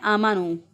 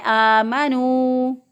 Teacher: ये वाव मद्दा है, इसको लंबा करना था, इसको लंबा नहीं करते, तो बाज़ लोग इसको पढ़ देते हैं आमनो, आमनो पढ़ दें तो भी गलत हो जाएगा।